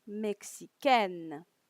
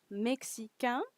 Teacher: Now, if you notice, in every time I pronounce the feminine version, you can hear the consonant, okay, the final consonant. When in the masculine version, you don't.